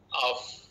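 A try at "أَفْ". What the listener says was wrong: Af saja, bukan off. Jangan tebal lah. F nipis.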